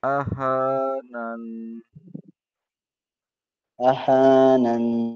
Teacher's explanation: یہ چھوٹی مد کے اوپر 2 الف کے برابر کھینچنا ہے